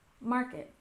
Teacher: we emphasized the first syllable in Market